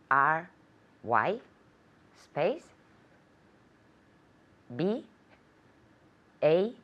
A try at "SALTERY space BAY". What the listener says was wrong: Perfect, very good.